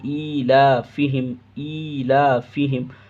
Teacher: کھڑی زبر کھینچنا ہے، لام کو کھینچنا ہے